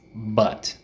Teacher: it's directly in the center of your mouth. It's not too far back, it's not too far forward. Your tongue is right in the middle.